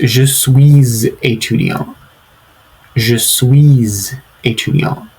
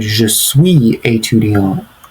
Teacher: you have to say the S at the end of suis if the identity word begins with a vowel. Try it yourself.